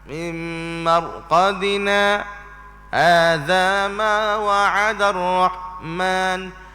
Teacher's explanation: Saktah berhenti seketika tanpa mengambil nafas yang baru.